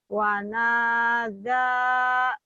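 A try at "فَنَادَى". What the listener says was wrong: Wanadha. Di situ bukan wawu tapi fa ya.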